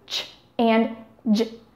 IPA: tʃ ; dʒ